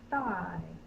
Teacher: my tongue is out the air is quiet that's the voiceless th